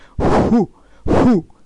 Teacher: O japonês ele fica com o lábio um pouco mais aberto, entreaberto. Então esse Fu aqui não é bem o Fu do jeito que a gente fala.